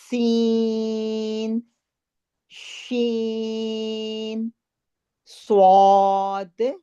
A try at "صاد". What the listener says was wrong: نہیں ایک منٹ، سواد نہیں، سواد دیکھیں یہ سوا کے ساتھ الف لگا ہوا ہے تو واو کی آواز نہیں آنی چاہیے.